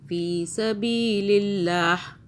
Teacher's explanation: اللہ باریک ہو کہ اللہ سے پہلے زیر آ رہا ہے